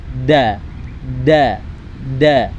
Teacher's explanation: Kemudian huruf da. Huruf da, makhrajul hurufnya itu ujung lidah ditempelkan tempat tumbuhnya gigi atas. Jadi digusi gigi atas.